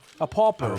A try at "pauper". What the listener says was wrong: P-A-U, not P-O.